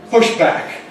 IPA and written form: ˈpʊʃ ˈbæk (push back)